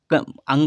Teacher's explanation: अंगा का उच्चारण कंठ के साथ नाक से होगा। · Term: नासिक व्यंजन